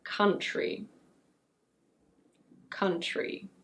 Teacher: when we have TR in the same syllable in English, it's usually pronounced chr